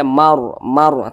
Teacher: ketika Kita mengucapkannya maka pangkal lisan kita atau Pangkal lidah kita itu naik terangkat ke atas · huruf ro sukun di belakangnya ada huruf yang memiliki tanda baca fathah maka huruf rnya dibaca tebal sehingga dibaca Mar Mar tebal seperti itu Nah jadi ketika Kita